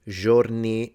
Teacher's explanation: he said giorni, he said it giorni like a j, which makes him sound a bit like a Florentine speaker